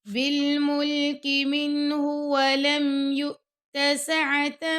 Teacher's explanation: احق بالملک منہ ولم، اور منہ کر کے نہیں پڑھنا، اور نون ساکن کے بعد یہاں پہ آ گیا ہا، تو یہاں پہ اظہار ہوگا